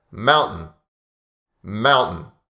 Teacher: often the t is silent in this word when we speak naturally and fast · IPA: /maʊn'ən/